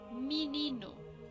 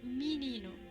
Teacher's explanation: Está escrito con E, pero los brasileros dicen menino con I